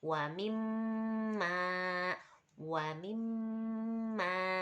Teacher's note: Ini ada tasdid di mim. Nah, itu guna, masuknya guna juga. Dibacanya 3.